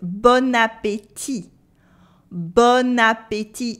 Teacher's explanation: It sounds as if the bon had turned into bonne, the feminine form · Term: la liaison